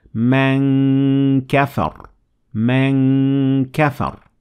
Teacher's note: Your mouth is getting ready for the kaf, but letting the sound resonate in your nasal cavity.